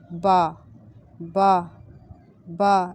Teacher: اس میں ہونٹ آپ نے زیادہ گول نہیں کرنے، ہونٹوں کے دو تر حصے، اوپر والا اور نیچے والا ہونٹ آپ اس میں ٹچ کرے گا تو با ادا ہوگا